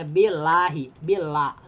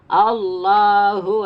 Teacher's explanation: Tapi kalau sebelum lafaz jalalah ini kasrah cuma satu ya, kasrah ya. Nah, la-nya ini dibaca tarkik tipis